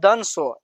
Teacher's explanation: इसका उच्चारण दांत के सटने से यानी दांत के उच्चारण से होता है।